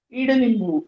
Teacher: यानी उसका उच्चारण करते समय ईडलिंबू यानी ई थोड़ा लंबा आ जाएगा स्वर में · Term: बड़ी वेलांटी